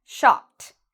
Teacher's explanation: Shop ends in a P sound. So because of that, we pronounce it like a T. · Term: strong T sound